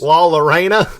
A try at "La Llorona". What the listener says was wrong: There's 2 L's. You got to roll that L.